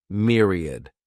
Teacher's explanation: The next noun is myriad. This word has 3 syllables, and the stress is on that first syllable. Mere sounds like mere, myriad.